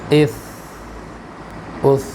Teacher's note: ہمس کی وجہ سے آواز پست ہوگی نا